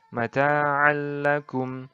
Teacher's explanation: memasukkan atau meleburkan nun mati dan tanwin tanpa disertai dengan dengung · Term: idgham bila gunnah